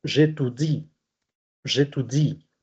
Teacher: voy a perder la E, que es muy débil. Es tan débil que desaparece frente a cualquier otra vocal.